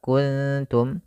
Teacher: ada nun mati bertemu kaf samarkan ke kaf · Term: ikhfa